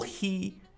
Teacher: he, with the higher tongue position, more closed oral position, gives a more focused, brighter sound.